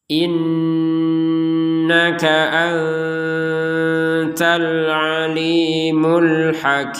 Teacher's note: kalau nun bersukun dilihat dulu apa hurufnya setelahnya huruf ta. Maka dibaca dengan samar